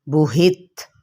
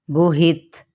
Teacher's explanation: یہاں پہ یہ دیکھیں، با پیش بو، حاضر ہی، بوہی، تا زبر تا، بوہیتا، اور اگر ہم وقف کر لیتے ہیں تو یہاں پر ہم ادا کریں گے بوہت، تا پہ ہمس ہو جائے گا